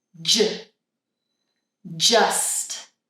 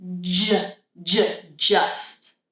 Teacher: So, I'm creating a vibration. I put my tongue up, stop the air, let it down, let the air out. But my voice is on the whole time.